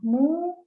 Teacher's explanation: ketika mu itu kan dimonyongkan ya bibir kita